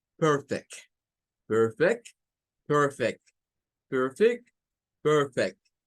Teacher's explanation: if we are going to use this word like a verb, we have to use for this part, for the first syllable, the schwa